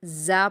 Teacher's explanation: زا کو آپ سختی سے پڑھیں گے لیکن باریک پڑھیں گے، زوا نہیں پڑھنا. بہت سارے اسٹوڈنٹس اس میں مسٹیک کر رہے ہیں کہ وہ زا کو زوا پڑھ رہے ہیں.